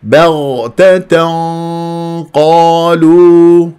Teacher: لازم ترفع الاقصى اللسان وانت تاتي بالغنه